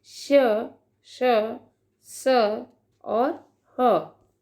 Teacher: वायु मुख से रगड़ खाकर ऊष्मा पैदा करती है, अर्थात उच्चारण के समय मुख से गर्म हवा निकलती है। जब हम इन व्यंजनों का उच्चारण करते हैं तो मुख में एक क्या होती है, रगड़ होती है और उस रगड़ से मुख से एक गर्म हवा निकलती है।